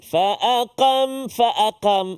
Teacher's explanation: menjelaskan sebutan Huruf qaf yang pertama sekali supaya dia tak bunyi tipis